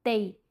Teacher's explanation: अब ता की आवाज़ या की तरफ टिल्ट करेगी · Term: या लीन